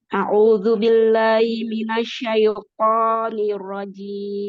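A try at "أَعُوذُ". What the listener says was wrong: Pakai ain, Bu. A'udzu. Nah, jangan audu.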